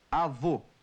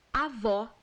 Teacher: Avô, com O fechado. Avó, com O aberto.